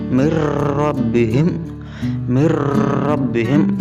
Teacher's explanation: nunnya tidak terbaca, langsung dileburkan atau dimasukkan ke dalam huruf ra, ra-nya bertasydid. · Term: idgham bila gunnah